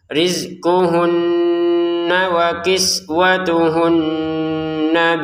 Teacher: Hunna ini didengungkan dua harakat